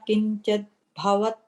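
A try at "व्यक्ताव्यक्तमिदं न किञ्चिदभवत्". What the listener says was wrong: in the first line, kinchida, I think you said kinchid, that's why it's just not landing for you. Kinchida bhavat.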